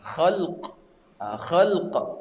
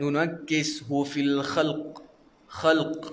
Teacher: Jangan terlalu kuat, kerana kalau tuan-tuan bunyi terlalu kuat nanti qaf tu hidup. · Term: huruf qaf